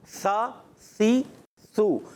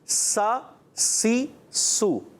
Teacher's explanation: سا بغیر سیٹی والا ہے، سا سی سو. اور سین سیٹی کے ساتھ